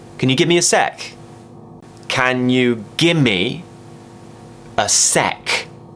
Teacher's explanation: firstly give me is becoming gimme second is becoming sec this is a very common abbreviation that